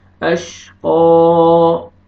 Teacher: جب سٹاپ کریں گے تو کھڑا زبر ہو جائے گا، اشقى، آپ نے قاف کو کھینچ کے پڑھنا ہے ایک الف